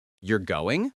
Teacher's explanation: Sounds like a question because the voice rises. A falling intonation indicates a statement. · A rising intonation at the end of a sentence indicates a question. You're going sounds like a question because the voice rises.